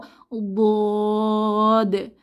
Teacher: জিহবার গোড়ার কিনারা উপরের মাড়ির দাঁতের গোড়ার সাথে লাগিয়ে উচ্চারিত হয় বদ। এই হরফটি যখন এককভাবে আমরা উচ্চারণ করব, লম্বা করে ৪ আলিফ টেনে উচ্চারণ করব বদ।